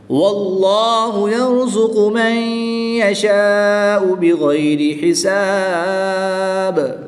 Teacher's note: جب با ساکن ہوگا تو یہ حروف قلقلہ میں سے ہے، تو اس میں قلقلہ کو خوب ظاہر کریں گے